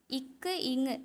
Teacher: நாவின் முதல் அன்னத்தின் அடியை வந்து தொடுறதால பிறக்குது